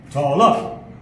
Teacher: the stress is put on the first syllable